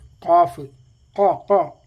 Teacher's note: ഹംസും ഇല്ല ശ്വാസം പുറത്തേക്ക് പോകുന്നില്ല കാഫ് പറയുമ്പോൾ ആ ഉള്ളിൽ തന്നെ മുയങ്ങുകയാണ് കിടന്നിട്ട് ശബ്ദം ബോക്സിന്റെ മാതിരി അപ്പൊ